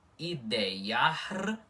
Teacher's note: Com esse I mais cortado, mais breve, por estar entre vogais, certo? Enquanto esse I inicial tem som I normal de vogal, tá bom? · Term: semivogal